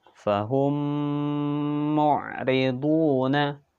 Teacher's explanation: sana kemudian selanjutnya Ear Worm misley atau idgham mimi ya adalah mim sukun bertemu dengan huruf mim maka dibaca melebur dan mendengung